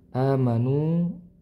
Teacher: Di sini ada alif sebelumnya. Hamzah berharakat fathah. Nah, dihukumi mad badal ya. Dibaca panjang dua harakat.